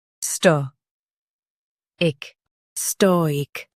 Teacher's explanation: Stress STOH and keep IC light.